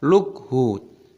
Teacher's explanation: kafnya dimatikan dibaca lukhu. Tapi tidak boleh dikolkolah, dipantulkan suaranya